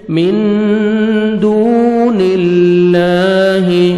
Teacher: اخفا ہے، نون ساکن کے بعد 15 لیٹرز میں دال ہیں، آپ نے اخفا کرنا ہے، نوز میں ساؤنڈ لے کے جائیں گے ، من دون اللہ، واو مدہ، دال کو 1 سیکنڈ کھینچیں